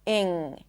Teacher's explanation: Technically, it's a lax I sound and then an NG, ing. Doesn't have a G sound at the end. It's not ing, it's ing. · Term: ing suffix